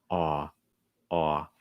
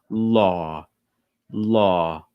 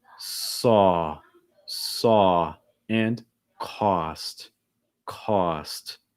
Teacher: The back of my tongue is high and the front of my tongue is down.